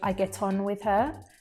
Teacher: that t is linking to the word on to connect them together